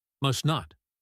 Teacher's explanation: The T in must is followed by the N in not. We often drop the T in must. Must not. Or we hold it.